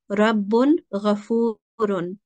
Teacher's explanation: we're going to clearly say the Tanween or the Noon sound